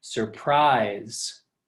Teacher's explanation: notice my voice goes up at the end of the word surprise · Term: stressed syllable